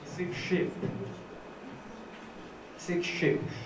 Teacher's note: S is pronounced as sh in front of sh sound because of the assimilation process.